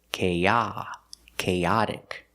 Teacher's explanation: But with chaotic, the stress is on the second syllable.